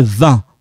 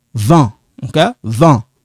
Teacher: Instead of saying 20, no, you don't pronounce that T.